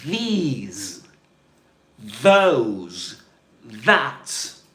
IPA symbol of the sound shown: ð